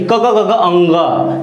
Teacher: बोलने में गले यानी कंठ से आवाज निकलती है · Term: कंठ वर्ग